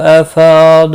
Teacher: دعاد مستعلیہ ہے، پر پڑھا جائے گا۔